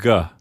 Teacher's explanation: When you say the letter G, your vocal cords are vibrating, so you get G. But besides that, the C and the G make the same mouth movement.